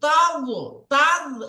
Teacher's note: তো এই দোয়াতকে পুর করে পড়তে হবে, মোটা করে।